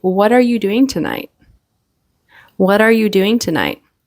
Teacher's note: So the T generally kind of turns into a D sound, a fast D before the next word in this sentence, in this question.